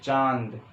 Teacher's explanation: इसमें देखो आधी आवाज नाक से, आधी आवाज जीभ के ऊपर से ऐसे आती है, जैसे लगता है मुंह से भी निकल लिया आवाज, तो चांद, ठीक है। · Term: अनुनासिक